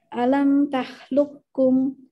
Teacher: Ini dia berdekatan, tapi ketika menemukan dua huruf yang berdekatan seperti ini, maka huruf qafnya akan hilang. Dilebihkan ke huruf K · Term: Idgham mutaqarribain